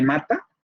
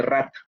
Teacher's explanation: uno es bilabial y nasal, como de mata, y que otro es alveolar y vibrante múltiple, en el caso de rata. Y eso es lo que produce la distinción de formas de significado.